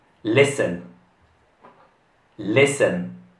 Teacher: In questa parola non si pronuncia la T.